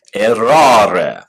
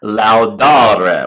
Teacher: First conjugation verbs will have a long A before the re in the infinitive form.